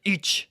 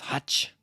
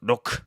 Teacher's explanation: it's another instance of high vowel devoicing